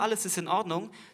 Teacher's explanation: Wenn ein Wort mit einem Vokal anfängt, werden die Wörter schön voneinander getrennt. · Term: Knacklaut